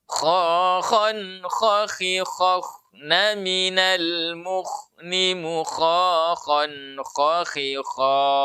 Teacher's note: Adapun kalau kha, ya, itu napas dan suara yang mengalir. Ya, dua-duanya mengalir. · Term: huruf kha